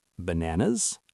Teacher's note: For the first items, your voice goes up. This tells the listener, I am not finished. There is more.